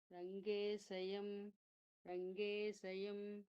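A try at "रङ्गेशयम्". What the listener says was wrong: Bhujagashayanam. How you will say Bhujagashayanam? Shantakaram Bhujagashayanam Shayanam Shapara. So here also Rangeshayam Middle of the tongue, upper palate, not from the tip of the tongue, sir.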